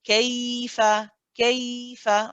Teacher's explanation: you hold the ya and you let it run